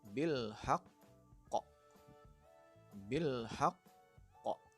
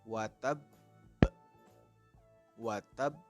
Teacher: ada huruf Qalqalah yang bertasydid dan dibaca sukul karena diwakafkan Hai Adapun cara membacanya dengan ditekan dan ditahan dua harakat atau satu Alif baru setelah itu dipantulkan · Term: Qalqalah Akbar